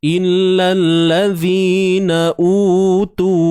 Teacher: jangan lupa huruf zal, keluarkan sedikit hujung lidah